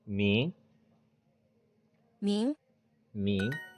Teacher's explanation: there's the rising tone so careful of that